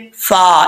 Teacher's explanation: فا کا مخرج اوپر والے جو 2 دانت ہیں ان کا کنارہ نیچے والے ہونٹ کی تری والی جگہ پہ لگے گا تو فا پڑھا جائے گا